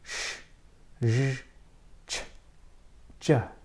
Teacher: consonant sounds that are made with the blade of the tongue and the hard palate. The hard palate is the part of your mouth that is behind your teeth, perhaps 1 to 2 centimeters back.